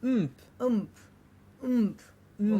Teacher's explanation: it's a nasal m, p, and p is of course bilabial. So the sound would just happen somewhere in your nasal tract.